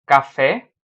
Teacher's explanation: ela é oxítona quando a última sílaba é a mais forte